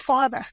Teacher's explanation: removing an R where there is an R, like father